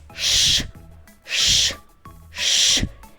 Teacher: Подивіться на ротик зубки стиснуті звук можна потягнути але не проспівати